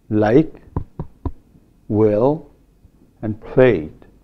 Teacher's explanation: So we have a velarized L and a voiceless L in addition to the normal L. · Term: three different forms of L